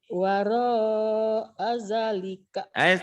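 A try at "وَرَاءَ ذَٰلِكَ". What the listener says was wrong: Wara'a dzalika tekannya di za. Wara'a dzalika faula ika humul adun. Ayo penekanannya belum bagus.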